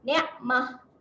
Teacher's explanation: Kalau kita nak wakaf dekat sini, dekat perkataan ni, matikan dengan bunyi huruf ha berbaris sukun. Matikan dengan bunyi huruf ha yang matilah.